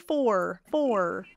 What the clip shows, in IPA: fɔər